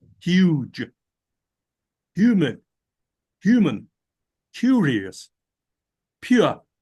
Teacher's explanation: The y sound is added to the word as a secondary articulation.